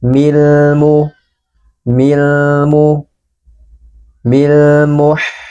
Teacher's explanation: dengan huruf mim huruf mim adalah salah satu huruf qamariah maka lamnya harus kita baca dengan jelas dan sebagian suaranya kita alirkan